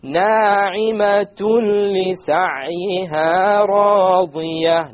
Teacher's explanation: Okay, because there's a tanween followed by a la. So we have the merging, the idgham, but we have it without ghunna.